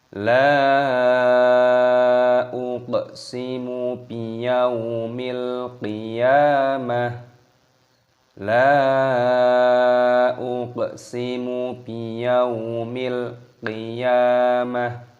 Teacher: Perhatikan di sini terdapat lam, alif. Lamnya ini dibaca panjang, mad jaiz munfasil, dipanjangkan 5 ketukan. La uq di sini qafnya berharokat sukun, kita baca mati dan kita pantulkan suaranya, kita qalqalah dibaca uq.